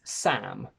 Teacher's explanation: My name is Sam with an open A, but this sound doesn't really exist in many other languages that I know. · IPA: /æ/